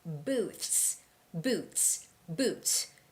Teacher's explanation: when you put it all together, you can hardly hear the TH sound. So it's more like boots.